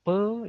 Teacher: saat mengucapkan pe itu bibirnya itu mengatup dulu pe ya baru kebuka jadi dia di muncul dari bibir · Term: konsonan bibir